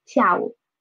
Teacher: 午 is a third tone and it is in the disyllabic collocation, so we should read it as a half third tone